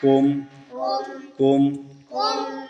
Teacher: মিম সাকিনে ইজহার গুন্না হবে না